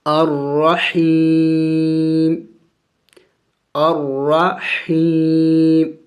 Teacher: وقف کریں گے تو وقف میں میم کو سائلنٹ کر دیں گے، یعنی اس کو ساکن کر دیں گے